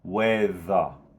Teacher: just leave the R as a schwa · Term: schwa sound